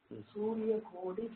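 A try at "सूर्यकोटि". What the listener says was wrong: Okay, Anga Surya Koti. நீங்க சொல்றதே கோடின்னு கேட்டது எனக்கு. Okay, Surya Koti, because it is, if there is no subscript, it is 1, right? It means it's 1, not 3. Surya Koti.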